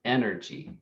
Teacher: So there are some languages, not all languages, that will put more emphasis, more energy on a particular syllable within the word. So like the word energy, the stress is on the first syllable.